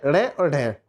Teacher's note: तो देखिए इनके उच्चारण में जीभ पहले ऊपर उठकर मूर्धा का स्पर्श करेगी। जीभ सबसे पहले ऊपर उठकर क्या करती है, मूर्धा का स्पर्श करेगी, फिर झटके के साथ नीचे आ जाती है। तो इन व्यंजनों को उत्क्षिप्त, मतलब जिसने एकदम उठी और उठ के एकदम उच्च ऊंचाई को प्राप्त किया और एकदम नीचे जिम्पा पे जाके उत्क्षिप्त उठे और एकदम उसका क्षरण हो गया, उत्क्षिप्त व्यंजन।